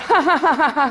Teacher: you find nasality in posed laughter, that kind of ha-ha-ha-ha sound, that you never get, you could not do if you were laughing involuntarily.